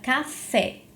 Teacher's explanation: na palavra café a sílaba tônica é a sílaba fé